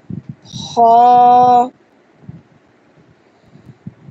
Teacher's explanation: خا یہ مکمل سخت ہے اور لسان یعنی زبان کی اندر جڑ جو ہے نا وہاں سے یہ ادا ہوتا ہے خا جب وہ اوپر تالو کی طرف اٹھتی ہے.